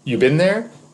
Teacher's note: If I say, you been there, with rising intonation like that, it's a question. You don't need the have.